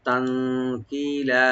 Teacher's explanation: তানকিলা তা ওপেন রাখবেন আর নুন সাকিন এখানে আমরা এফা করব